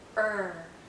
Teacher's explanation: the tip of our tongue is actually curled backward, and as it curls back, the central part of our tongue goes up.